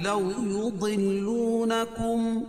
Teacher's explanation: لو واولین ہے، اس کو نرم آواز کے ساتھ جلدی ادا کریں گے۔